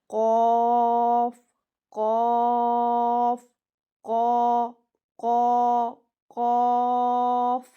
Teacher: जुबान की जड़ तालू के ऊपर नरम हिस्से से लगेगी। तो कौफ काफ मद लगी है तो तीन अलिफ जितना लंबा करेंगे। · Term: मोटा कौफ